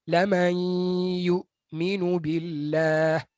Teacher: So untuk mengelak daripada kesalahan itu, bila kita berjumpa huruf hamzah, terutamanya huruf hamzah yang sukun, yang mati, kita kena lembutkan kematian hamzah itu. Baru tak kedengaran seperti orang yang sedang muntah.